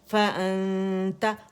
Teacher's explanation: حمزہ کو آپ نے الجوف سے ادا نہیں کرنا بلکہ آپ نے حمزہ کو کہاں سے؟ فارتھروٹ سے ادا کرنا، اقص الحلق سے. فَأَنْتَ، آنتا کر کے نہیں ادا کرنا ہے، ٹھیک ہے، منہ نہیں کھولنا ہے.